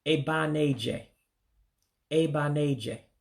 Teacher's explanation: You drop that last E in the first word, and you drop the second A in the second word. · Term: drop vowels